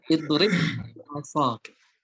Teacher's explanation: idrib ba bertemu dengan ba, kemudian maka keduanya diidghamkan